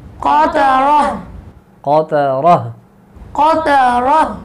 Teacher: اس کو وقف میں بدلیں گے اور وقف میں ہا کی آواز آئے گی